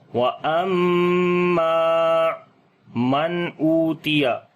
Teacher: نون ساکن کے بعد حمزہ آ گیا ہے تو اس وجہ سے یہاں پر نون ساکن کا اظہار کریں گے، ظاہر کر کے پڑھیں گے نون کی آواز کو، او کو لمبا کریں گے، واو مدہ ہے۔